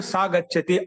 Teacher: తేన తాభ్యంతై సహా సహ అంటే అతడు సహ లో విసర్గం ఉంది కదా ఆ సహ లో ఉండే విసర్గము ఒకవేళ పక్కన అంటే తర్వాత దానికి మొదటి అక్షరం వ్యంజనం ఉంటే కచ్చితంగా లోపం తీసేసి చెప్పాలి